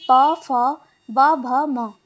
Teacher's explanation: जिन व्यंजनों के उच्चारण में दोनों ओष्ठों द्वारा श्वास का अवरोध होता है ओष्ठ व्यंजन कहलाते हैं।